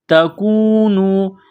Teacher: واو ساکن سے پہلے پیش ہے، حروف مدہ واو ہے، ایک الف کے برابر کھینچنا ہے